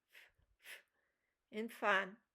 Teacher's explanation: Labiodental, lower lip and upper teeth